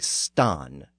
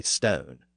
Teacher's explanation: Northern speakers held on to the original long A sound, in many native English words.